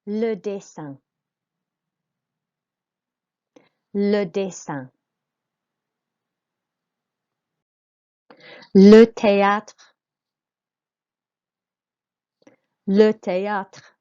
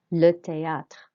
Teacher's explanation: your voice goes up and makes an A sound on the E accent, and then the A with the accent on the top makes an R sound.